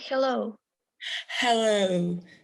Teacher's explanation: in english ha the air just goes between the vocal chords and it goes out it's like like a sigh basically